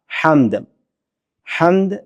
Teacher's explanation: اور ہا جو میٹھی ہا ہے، حمد والی ہا ہے، وہ گلے کے درمیان سے ادا ہوتی ہے